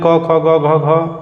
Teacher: क ख ग घ घ होते हैं इनका उच्चारण स्थान जो होता है कंठ होता है